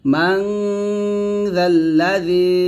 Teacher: যখন আপনারা জালটা উচ্চারণ করবেন, জিহ্বার আগাটা উপরে দুই দাঁতের আগার সঙ্গে লাগিয়ে জালটা পাতলা উচ্চারণ করবেন